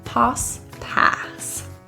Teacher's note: The A in pass is a slightly more open lip, open jaw position. Rather than relaxed lips, ah.